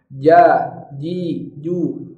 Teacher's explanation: Huruf jim. Jim juga makhrajnya adalah tengah lidah. Angkat tengah lidahnya.